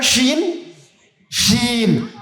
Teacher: এই যে শব্দটা ছড়িয়ে ছিটে যাচ্ছে দাঁতের ফাঁক দিয়ে